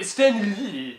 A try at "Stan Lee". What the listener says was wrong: You keep putting emphasis on Lee. there, you sounded French. Lee.